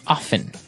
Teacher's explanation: they kind of leave out the strong T sound